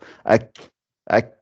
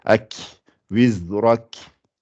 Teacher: Il y a un petit sifflement d'air qui sort. Ak, ak. Voilà. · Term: lettre de Hams